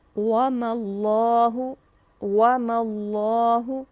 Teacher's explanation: یہاں اب اللہ سبحانہ و تعالیٰ کا لام باریک نہیں پڑھا جائے گا